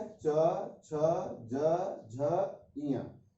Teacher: यह तालु से होता है, यानी जीभ जो होता है वह थोड़ा सा दांत के ऊपर में यह छूता है। च, छ, ज, झ, इया, ये तालु से हो गया।